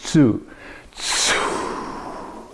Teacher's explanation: the consonant is sort of at the beginning, and then you do that long air coming out in each one of these. So the tsu releases like that. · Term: tsu sound